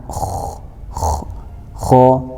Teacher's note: huruf kho itu ada seperti orang kalau dicontohkan seperti orang mau membuang dahak